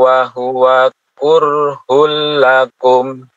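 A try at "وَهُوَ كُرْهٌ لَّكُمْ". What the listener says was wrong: Baik, wa huwa kurhun. Wawunya jangan sampai di agak panjang. Wa huwa kurhul langsung.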